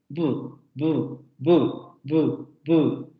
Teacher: En este caso, las tres consonantes son bilabiales, pero vamos a tener primero una bu, que sería una consonante oclusiva, porque se produce esta explosión del aire